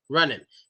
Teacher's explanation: We don't pronounce NG. We only pronounce the N.